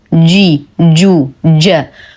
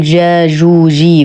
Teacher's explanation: الجيم دائما مخرجه مقفل، احتكاك بسيط بين وسط اللسان ووسط الحنك الأعلى